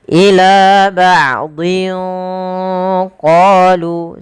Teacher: tanwinnya disamarkan ke huruf qof. Ila ba'in qolu sambil ditahan. · Maka para ulama kita mengatakan tanwin itu ya nun sukun yang dimatikan, maaf nun sukun yang dibunyikan tapi tidak ditulis. Maka di lafal din ketemu dengan huruf qaf, maka dia hurufnya tanwinnya disamarkan ke huruf qaf. Ila ba'dhin qalu, sambil ditahan.